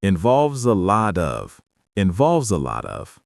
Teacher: that Z sound links directly to the letter A in the word involves